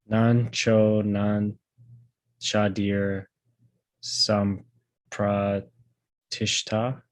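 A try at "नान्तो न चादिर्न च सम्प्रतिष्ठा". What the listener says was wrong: Yep.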